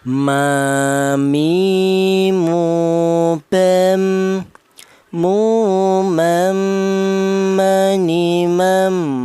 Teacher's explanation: Akan tetapi dibedakan untuk huruf wawu ini dihasilkan dari kedua bibir yang renggang, sementara untuk huruf ba dan huruf mim ini dihasilkan dari kedua bibir yang rapat